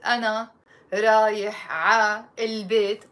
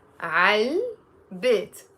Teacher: But together, I'm not going to pronounce it أنا رايح ع البيت. We make a liaison and we say عل بيت. أنا رايح على البيت.